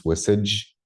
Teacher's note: So with a palatalized D, that becomes a j. · So basically everything gets taken back from alveolar to post-alveolar.